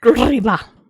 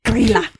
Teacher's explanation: It looks like Grilla, but they want you to roll the R